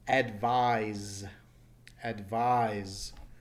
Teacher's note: notice even though it's an S that s is taking a Z sound